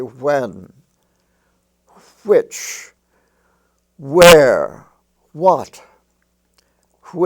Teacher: it's pronounced as if it was spelled hw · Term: wh consonant graph